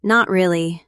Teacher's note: in a calm, soft voice, it means, I didn't enjoy it much, but that's okay. No big deal.